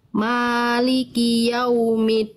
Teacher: jangan keluar nafas dal nggak punya sifat hams